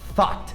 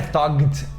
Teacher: E quando a gente tem esse GHT, a gente não pronuncia o G, não pronuncia o H, é como se tivesse só um T mesmo. Então fica thought, não é thugged ou nada do gênero.